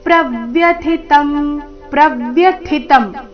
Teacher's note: ಥಿ ಮಹಾಪ್ರಾಣ, ಮುಂದಿನ ತ ಅಲ್ಪ ಪ್ರಾಣ.